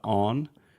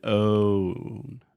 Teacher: So it's a moving vowel, which means you're creating 2 sounds in the same small space